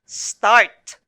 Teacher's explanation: the two consonants are blended together but you can still hear the individual sounds of s and t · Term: initial consonant blend